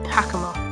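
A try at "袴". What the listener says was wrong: Technically, it's pronounced Hakama. All Japanese words will make the A sound like ah. So it's Hakama. All vowels are consistent in Japanese.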